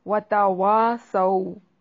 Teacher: واو ہونٹوں کو گول کر کے ادا کریں گے، تا باریک ادا کریں گے